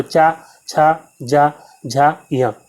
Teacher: चा वर्ग के सभी जो अक्षर हैं वो जो है तालव्य हो जाते हैं, क्योंकि यहाँ पे हमारी जीभ जो है तालु को स्पर्श कर रही होती है। ठीक है, तो चा, छा, जा, झा, या, इन सभी वर्णों को आप बोलेंगे, इन सभी व्यंजनों को जब आप बोलेंगे तो हमारी जीभ जो है एक ही स्थान पर स्पर्श कर रही होगी, और वो कौन सा स्थान है, वो है तालु।